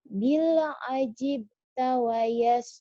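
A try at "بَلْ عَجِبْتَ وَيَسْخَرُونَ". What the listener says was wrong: Bukan bil tapi bal. jelas itu bil. Ya bal ah.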